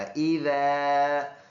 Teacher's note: ذال ان حروف میں سے ہے جو نرم ادا ہوتے ہیں، تو تھوڑا سا زبان نکال کر سامنے کے دانتوں سے لگائیں گے